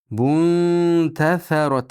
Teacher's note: nun aniq o'zi o'qilmaydi, balki ta'dichiga yashiriladi.